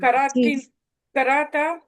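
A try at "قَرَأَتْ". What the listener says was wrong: कराअत, ता साकिन लगानी है।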